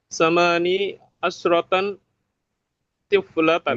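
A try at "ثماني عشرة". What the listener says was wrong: Samani, samani, samani, asyrata, jangan asyratan.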